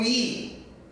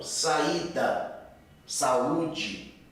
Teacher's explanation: O I fica sozinho, ele forma uma sílaba individual. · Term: hiato